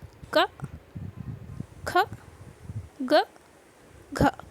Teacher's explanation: गले से, हमारे कंठ से साउंड निकलता है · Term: कंठीय